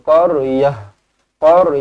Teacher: ta marbutah apabila kita wakaf apabila kita berhenti dekat situ kita akan tukarkan dia menjadi huruf ha ha mati